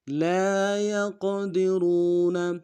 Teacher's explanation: را کو موٹا ادا کریں گے، واو مدہ ایک الف دار میں کھینچیں گے، نون کو نون سے ادا کریں گے.